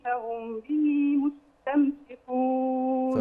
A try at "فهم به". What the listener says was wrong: فهم به، يعني زوديها حركة،